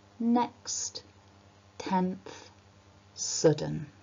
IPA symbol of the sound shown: n